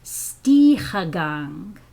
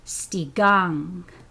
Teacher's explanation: But that same term in northern Haida is pronounced stigang, okay? So the h has been dropped again in northern Haida.